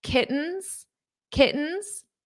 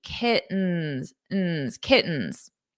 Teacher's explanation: in American English when we have a t or two T's between vowels we pronounce the t's as a very soft D